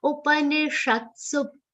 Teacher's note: Su is a short sound, so aghat is clearly audible. Su is followed by half ba and a complete ra.